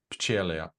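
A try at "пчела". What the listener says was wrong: No, in Russian, the stress is on A, so it's pchela.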